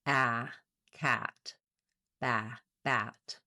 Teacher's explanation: the front of my tongue is down behind the back of my teeth. The back of my tongue is lifted and my jaw is fairly open. · It's the most open of the front vowels · a black cat vowel is a front lax open vowel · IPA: /æ/